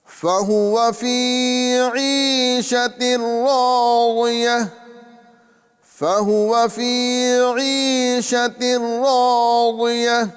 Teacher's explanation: فا، ہا، واو، یہ تینوں پر حرکت ہے، لہذا اس کو نہیں کھینچیں گے